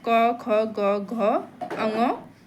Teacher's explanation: कंठ वर्ण कौन से होते हैं जो गले से बोले जाते हैं?